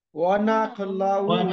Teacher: আইনটা গলাটা চেপে পড়তে হবে